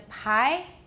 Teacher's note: PI is of course voiceless but it has aspiration that's what makes the biggest difference between bi and pie in